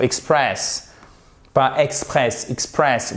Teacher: vous avez l'accent tonique sur la deuxième la seconde syllabe